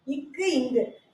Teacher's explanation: இதை பொறுத்த வரைக்கும் இந்த நாக்கோட முதல் பகுதி இருக்கு இல்லைங்களா? இந்த முதல் பகுதி அன்னத்தின் அடிப்பகுதியை பொருந்துவதால் இக்கும் இங்கும் தோன்றுது